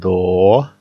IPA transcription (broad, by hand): dɔ